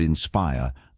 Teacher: in the word inspire, the stress is on the second syllable